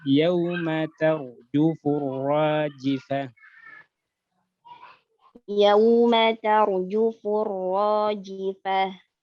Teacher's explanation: Jangan kelamaan ya-nya. Yau langsung.